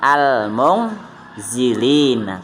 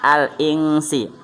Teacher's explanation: Ada 15 huruf, ya. Dan cara membacanya yaitu dengan samar-samar, yaitu dengan dengungnya panjangnya 2 harokat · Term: ikhfa hakiki